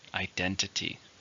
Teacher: How many syllables? Identity. 4, stress in the second.